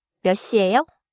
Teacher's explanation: the final sound of 몇 is pronounced like a 디귿 sound before 시, so it sounds connected in natural Korean